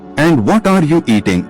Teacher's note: Intonation goes down, WH, question.